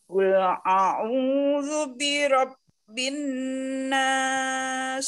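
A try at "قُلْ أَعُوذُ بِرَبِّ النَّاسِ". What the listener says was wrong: Kurang sedikit lagi ditahan. Bin nas. Qul a'udzu birabbin nas.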